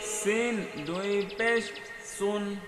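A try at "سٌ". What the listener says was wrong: এটা এগুলো কিন্তু মিশিয়ে দেওয়া যাবে না সিন দুই পেশ সুন বলা যাবে না সিন দুই পেশ সুন এটা ভেঙে ভেঙে সুন্দর করে পড়তে হবে স্পষ্ট করে সিন দুই পেশ সুন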